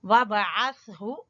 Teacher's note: زبان کی نوک اور ثنایا علیا اوپر کے دو دانتوں کے سرے جب آپس میں ملیں گے تو سا ادا ہوگا